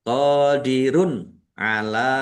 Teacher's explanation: Qodirun ala qofha alif mad thobi'i panjang dua harakat. Dumah tanwin bertemu dengan huruf ain. Bacaan izhar dibaca jelas.